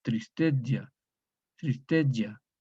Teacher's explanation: Tristitiam, tristigia. Latín vulgar, esta I abierta se confunde con la E cerrada.